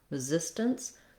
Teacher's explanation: We have the stress again on the zis, second syllable. We still have our unstressed first r or r syllable, resistance.